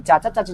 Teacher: जीभ को दांत में टच कराने पे च का उच्चारण आता है